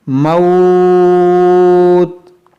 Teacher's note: موت، یہاں واو ساکن سے پہلے زبر ہے، یہ واو لین ہے، اور واو لین کے بعد جب یہاں وقف کریں گے تو اس تا کو ہم، تو اس پیش کو ہم ساکن کریں گے تو یہاں پر عارضی سکون آئے گا رکنے کی وجہ سے، تو یہاں پر ہم مد لین عارض کر کے رکیں گے، یعنی کھینچ کر رکیں گے، موت، اس طرح سے، اور پھر پیچھے سے ملا کر پڑھیں گے تو پھر مد لین عارض نہیں ہوگا۔